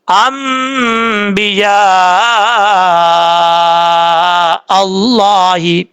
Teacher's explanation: لفظ اللہ سے پہلے زبر ہے، اس کو پر پڑھا جائے گا · یہاں پر مد ہے، مد متصل، 3 الف کے برابر اس کو لمبا کریں گے